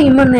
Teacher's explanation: ரெண்டு இதழும் வந்து ஒட்டும் பொருந்தும் பிறக்கிறது மேலும் கீழும் பொருந்ததால் பிறக்கும் ஈ